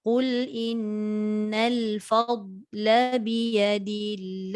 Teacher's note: La tak boleh panjang. Biya tak boleh panjang.